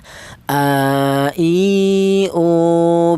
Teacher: Huruf berasal dari pangkal tenggorokan. Ya, pangkal tenggorokan itu tenggorokan bagian bawah yaitu ditempati dua huruf yaitu huruf hamzah dan huruf ha.